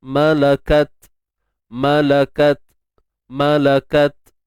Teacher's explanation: Tahan suara dahulu, kemudian baru lepaskan nafas. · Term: sifat syiddah dan hams